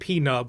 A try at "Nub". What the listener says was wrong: I think it's just Nub. I think the P is silent. No way. No way. I disagree. I'm going to be calling him Nub because that's dumb.